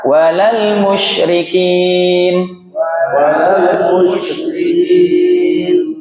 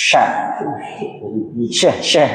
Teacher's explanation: Karena dia punya sifat namanya tafasiyi. Suaranya keluar dari udara yang menyebar dalam mulut.